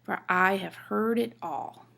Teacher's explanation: I is stressed, heard is stressed, and all is stressed.